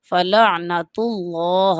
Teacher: تا پیش کے ساتھ آ جائے تو اللہ کا نام پر کر کے پڑھتے ہیں